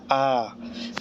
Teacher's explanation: इसके उच्चारण में मुख सबसे अधिक खुलता है आ ठीक है इसके बाद आता अर्ध विवत जैसे छोटा ओ